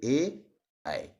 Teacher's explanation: जिनका उच्चारण कंठ और तालू दोनों से किया जाए उन्हें ही हम कंठ तालव्य वर्ण के नाम से जानते हैं